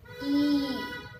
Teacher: ई के लिए भी अधिक समय लगता है, तो ये दीर्घ स्वर हो जाता है